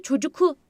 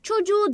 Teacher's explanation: Çocuk derken K yumuşak G'ye dönüyor. Çünkü çocuğu dediğimde çocuku demem. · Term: ünsüz yumuşaması